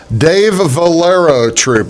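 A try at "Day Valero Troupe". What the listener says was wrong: Not Dave, Day. It's just Day.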